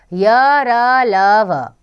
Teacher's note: जब हम बोलते हैं तो हमारी जीभ मुंह के किसी भी भाग को नहीं छूती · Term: अंतस्थ व्यंजन